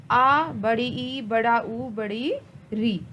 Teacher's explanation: ये जो 4 स्वर हैं इनको दीर्घ स्वर कहा जाता है। इन स्वरों को बोलने में ह्रस्व स्वर से दुगना समय लगता है।